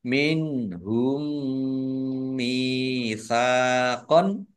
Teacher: nun sukun bertemu dengan huruf ha bacaan idhar dibaca jelas